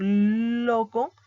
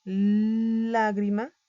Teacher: cuando el aire sale pegado a una de las dos paredes bucales, tenemos la L, ¿no? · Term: Los laterales